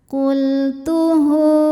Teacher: Jadi huruf sebelumnya tidak ada yang mati, huruf setelahnya juga tidak ada yang mati ya, tidak ada yang sukun ya, dan bukan a i u huruf setelahnya. Maka hak dhamirnya panjangkan dua harokat saja. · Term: mad silah qasirah